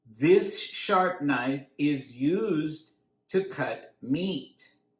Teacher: we pronounce it uZd. We stress used.